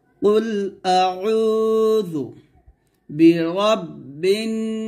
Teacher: যদি আমরা এখানে ওয়াকফ ধরি তাহলে বলতে হবে নাস অর্থাৎ নাতে আমরা তিন আলিফ টান দিয়ে এই সিনটাকে সাকিন করব